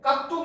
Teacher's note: 깍두기는 요 기역 받침 때문에 뒤에 있는 예사 소리가 무조건 된 소리로 나잖아요